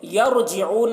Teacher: را ساکنہ سے پہلے یہاں پر زبر ہے تو را کو پور پڑھیں گے